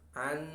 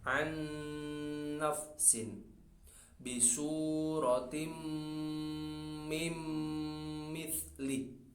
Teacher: ini idghamnya bigunnah, ada dengungnya, sehingga tidak langsung ke huruf setelahnya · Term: idgham bigunnah